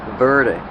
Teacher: Use a fast D. The T changes to a fast D.